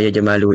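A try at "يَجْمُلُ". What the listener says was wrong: Ain fi'ilnya bukan fathah tapi dah jamula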